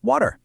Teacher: in a lot of British English, that R just kind of disappears